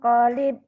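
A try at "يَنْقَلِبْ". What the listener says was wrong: kolibe. Ada E-nya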